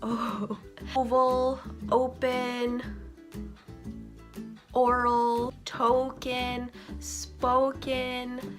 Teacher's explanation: in English your O's are more rounded